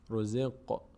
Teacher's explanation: قاف رو از همون پنج حرف قطب جد هست که قلقله میشه در هنگامی که ساکن باشن یه کمی می‌لرزه در مخرج